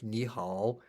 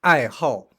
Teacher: But the pinyin, if you look at the pinyin, the tone has changed. 好 is third tone, but this one is fourth tone.